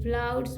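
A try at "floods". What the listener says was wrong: ये तो पढ़ना ही नहीं है, ओ आओ भी नहीं पढ़ना है।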